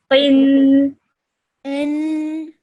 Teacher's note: Make sure you hold that nasal sound that it produces at the end for 2 seconds